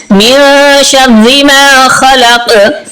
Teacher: یہاں شردی کی رات جو ہے یہ باریک ہے، اور من شردی اس لیے ہو رہا ہے کہ یہاں پر اخفا ہو رہا ہے، اور آگے ما خلق آخر پہ قاف پر قلقلہ ہوگا۔ دوبارہ پڑھیے، من شر ما خلق۔